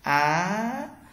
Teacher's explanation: Cái dấu sắc của Việt Nam ta thì người Trung Quốc gọi là thanh hai, và đọc giống như dấu sắc trong tiếng Việt và đọc kéo dài âm ra